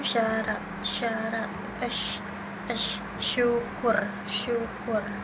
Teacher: Selanjutnya ada sh, bentuk mulutnya itu ujung lidah mendekati langit-langit keras, udara keluar dengan gesekan tanpa suara. Bunyinya itu geser tanpa suara.